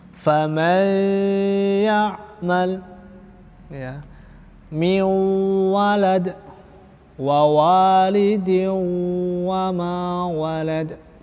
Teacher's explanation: Dia itu dengungnya nakis atau kurang sempurna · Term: idgham naqis